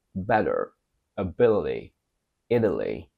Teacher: We pronounce it as d when T appears between vowels and the second one is unstressed.